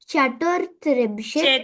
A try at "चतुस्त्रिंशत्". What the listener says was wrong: చతుస్, ఇక్కడ సకారం ఇది.